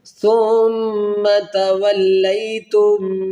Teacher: یہ میم ساکن کے جو قاعدے ہیں ان کا یہ قانون ہے کہ جب میم ساکن کے بعد جب دوسری میم آئے گی تو یہاں پر ادغام مال غنہ کیا جائے گا